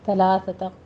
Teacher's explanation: ثلاثہ میں سا پڑھتے وقت اپنے سیٹی کی آواز نہیں لے کر آنی · اور جب قروء یہ ہم اس طرح سٹاپ جب کریں گے تو حمزہ پر جھٹکے کے ساتھ سٹاپ ہوگا